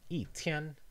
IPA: i˥˩ tʰjɛn˥